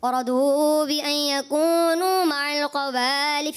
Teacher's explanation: ماشاءاللہ اچھے انداز سے پڑھا، مگر مجھے سننے میں تھوڑا ایسا محسوس ہوا جیسے آیت کے اس حصے میں رضوا بأن يكونوا مع الخوالف، خا کی ادائیگی کچھ جو ہے مجھے قاف کی طرف جاتی ہوئی محسوس ہوئی